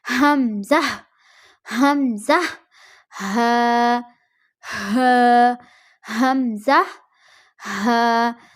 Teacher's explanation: حلق کے آخر سے جو سینے کی طرف ہے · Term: اقصائے حلق